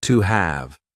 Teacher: He also used a linking W sound to join to and have together